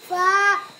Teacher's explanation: নিচে ঠোঁটের পেট সামনের উপরে দুই দাঁতের আগার সঙ্গে লাগাইয়া